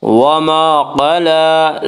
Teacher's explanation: لام کے اوپر کھڑا زبر ہے، کھڑا زبر کو ایک الف کے برابر کھینچ کر پڑھیں گے۔